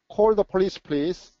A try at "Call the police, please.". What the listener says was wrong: So your po is a little bit strong. Make it more of a p.